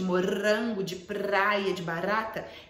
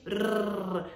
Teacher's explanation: Algumas crianças têm a musculatura de língua mais flácida e o R vibrante, de morango, de praia, de barata, ele precisa de rrr, vibração, né? Você eleva a linguinha e vibra, então a força muscular é maior.